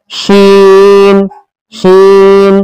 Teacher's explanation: शीन का मखरज है जबान का बीच और उसके मुकाबिल ऊपर का तालु, जबान का बीच वाला हिस्सा लगेगा और उसके मुकाबिल ऊपर का तालु।